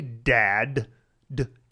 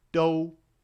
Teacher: in English, we tend to voice the D. So if I'm like, hey, dad, d.